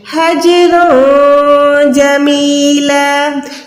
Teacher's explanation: ما یقولون, قوف واو پہ کو موٹا رکھیں, واہ بھی نہیں ہے, وَاهْجُرْهُمْ حَجْرًا جَمِيلًا. ہاں کو جم کے ساتھ ملائیں, جم کے کلکلا کریں. حَجْرًا جَمِيلًا, یہ حج نہیں ہے, حج حج, دونوں میں فرق ہے, ٹھیک ہے.